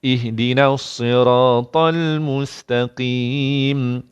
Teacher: Lam pun tak payah, terus masuk sad.